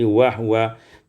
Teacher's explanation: wa huwa iskanul ha, disukunkan ha menjadi wahwa